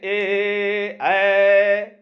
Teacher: जिसका उच्चारण कंठ और तालु दोनों से होता है, उसको हम लोग कंठ तालव्य कहते हैं।